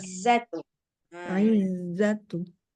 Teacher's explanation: Dikuatin lagi nanti desis zainya ya